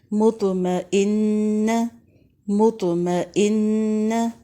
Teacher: یہاں پر غنہ ہو رہا ہے، 1 الف کے برابر آپ نے ناک میں آواز ٹھہرانی ہے